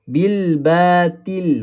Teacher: Persamaan huruf ta dan huruf ta adalah makhraj iaitu hujung lidah bertemu dengan pangkal gigi kacip atas. Tetapi berbeza pada sifat.